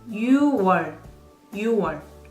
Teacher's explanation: There is an exception for June. Even though 6 is yuk in Chinese number system, but we drop G when you write and pronounce as well